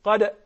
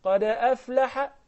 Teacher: But when I continue, the qalqala will sound a little lesser. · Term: lesser qalqala